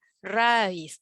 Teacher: Es una palabra aguda, muy bien, porque se pronuncia fuerte en la última sílaba.